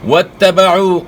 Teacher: تا کے اوپر شد ہے، شد کو خوب جماؤں کے ساتھ آپ نے ادا کرنا ہے. اور واتبعوا نہیں پڑھنا، او آواز حمزہ کی ہے، آپ نے عین کی آواز نکالنی ہے گلے کے درمیان سے، عو پڑھنا ہے.